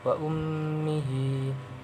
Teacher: ini idgham bi gunna karena ada huruf mim yang bertasdid, maka dibacanya harus didengungkan antara 2-3 harokat. Kemudian wa ummihi ini mad sila qasira sebab ada hak dhamir berharokat kasra yang harokat berdiri.